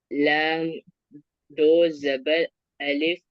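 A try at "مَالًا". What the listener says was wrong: नहीं, अलिफ को नहीं बोलेंगे, लाम दो जबर लन।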